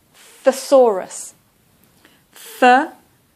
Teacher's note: And the stress is on the 2nd syllable.